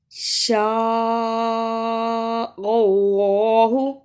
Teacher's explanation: شین پر زبر ہے لیکن مد ہے اور اس مد کو 5 بند انگلیاں باری باری کھولنے اتنا لمبا کرنا ہے